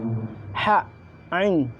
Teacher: Yang selanjutnya adalah tenggorokan tengah adalah tempat keluarnya ain dan ha. Ain dan ha ini adalah tempat keluarnya di tenggorokan tengah.